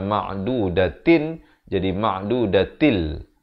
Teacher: Masuk tanpa dengung. Daripada ma'dudatin jadi ma'dudatil. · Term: idgham bila gunnah